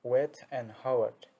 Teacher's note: Back of tongue raised to velum, but not too close, and lips are round.